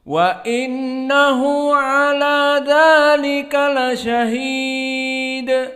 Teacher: Wa nun huna innahu dalam keadaan musyaddadah, maka nun musyaddadah wajibal gunnah. Setiap nun yang ditasdidkan wajib hukumnya gunnah.